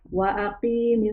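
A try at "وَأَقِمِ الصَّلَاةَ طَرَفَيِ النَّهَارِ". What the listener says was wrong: Q-nya nggak panjang ya.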